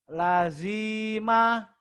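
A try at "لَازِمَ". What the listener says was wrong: La panjang.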